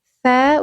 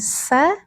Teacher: tsa ujung lidahnya sedikit keluar tsa. Bukan sa tapi tsa.